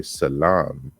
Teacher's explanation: in Arabic it is without the sh sound it's just a s sound